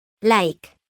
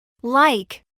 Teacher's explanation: la L clara del inglés es pronunciada con un sonido un tanto más prolongado y con la lengua un poquito más relajada